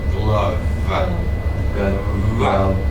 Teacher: You have to actually vibrate the teeth in the lower lip.